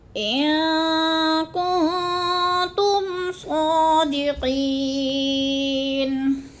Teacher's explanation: ان میں اخفا ہو رہا ہے، نون ساکن کے بعد کاف آ گیا حروف اخفا میں سے، تو ادھر اخفا کریں گے، آواز کو ناک میں چھپا کر پڑھیں گے۔